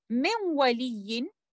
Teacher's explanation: letter noon sakina is merging into waw, but this idgham will be idgham naqis because one of the characteristic of letter noon, which is gunna, will be left behind, and that's why this will be idgham naqis but in a mutaqarib relationship.